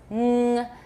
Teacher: the back of your tongue touches the velum